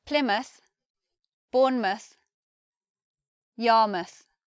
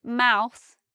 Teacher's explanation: We have Plymouth, Bournemouth, Yarmouth. So instead of mouth, it becomes muth. We have the schwa there